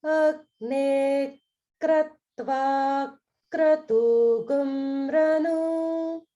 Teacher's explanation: you want to make sure that there's holding on the ik in kratva, and then again in the ik in kratugam.